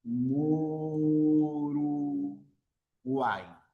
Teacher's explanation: Vocal cerrada más vocal abierta más vocal cerrada. Y es la vocal abierta la que va a tener la mayor fuerza de voz. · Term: triptongo